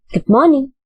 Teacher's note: So there, good is given importance. Good is in the high pitch, and low pitch is morning. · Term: falling intonation